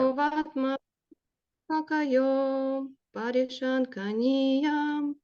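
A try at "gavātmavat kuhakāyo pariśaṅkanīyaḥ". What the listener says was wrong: Why do you go up at the end? I don't go up, I go down.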